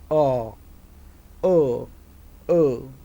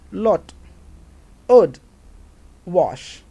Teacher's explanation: જીભનો પાછળનો ભાગ તેમજ જીભનો મધ્ય ભાગ, આ બંનેની વચ્ચેનો ભાગ is fully opened, the jaws are wide opened, and lips are neutrally opened. O, O, O. An unrounded shape of the lips is felt.